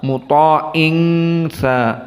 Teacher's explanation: tsamma mim musyaddadah seperti Nun musyaddadah hukumnya ghunah